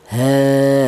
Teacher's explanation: E ini menunjukkan bahwa huruf ha tersebut dibaca panjang. panjangnya yaitu satu alif sama dengan dua harakat atau dua ketukan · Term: mad thobi'i, matobi'i